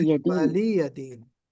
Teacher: ولی ولیدین واو کو گول بھی کرنا ہے، لام پر سکون لگانا ہے، ساکن پڑھنا ہے